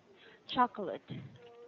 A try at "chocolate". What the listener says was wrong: late, the late there, it's not late, it's lit,